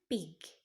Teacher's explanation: Jadi membangun tekanan udara dan kemudian melepaskannya. Ini adalah ledakan udara yang tiba-tiba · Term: stop or plosive